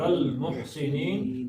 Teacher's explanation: نی 2 حرکتیں تھیں، یہ عارضی طور پہ زبر ختم ہو گئی تو 5 حرکتیں اس کو کھینچ لینا ہے